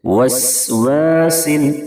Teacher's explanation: دونوں سین میں سیٹی جیسی آواز نکلنی چاہیے، واو کو پڑھتے ہوئے ہونٹ گول کر لیں گے